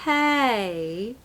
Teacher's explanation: A friendly way to say hey is just hey. It slides down.